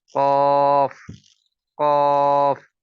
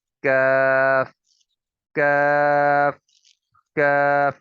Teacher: زبان کی جو جڑ ہے اس کے ساتھ بھی جڑتے ہوئے اوپر کے تالو سے جب لگتی ہے تو قاف کی ادائیگی ہوتی ہے۔ قاف کی ادائیگی کوشش کریں جتنی نیچے سے نیچے ہم ادا کر سکتے ہیں تو کریں، اس سے آواز موٹی ہوتی چلی جائے گی۔